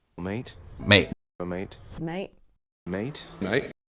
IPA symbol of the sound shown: t